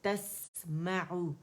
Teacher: یہاں سین باریک ہے, اس میں صفیر ہے, چڑیا کی سی آواز, سیٹی کی سی آواز ہے, اور اس میں آواز بھی چلے گی.